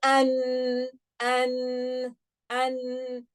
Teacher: So the tongue is on the makhraj, but the sound is coming out from the nose.